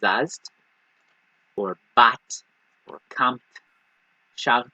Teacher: there's no vowel between that last letter of the verb and then the tav